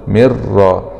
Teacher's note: مع الإدغام من غير غنة في الراء المشددة مع الفتح، لأن الراء من حروف كلمة رل من را.